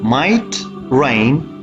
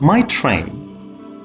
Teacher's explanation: The Ra is voiced in initial rain here, might rain, and I is shortened, versus my train. Ra is voiceless following ta in train, which is longer.